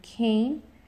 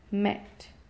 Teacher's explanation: in mid front we have a as in Cain and short e as in met